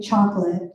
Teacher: we want to hit the chalk and we want to hit the let, and we don't care about the O. We're just like, forget about that silly little O, because we got a chocolate because we're a stress-timed language.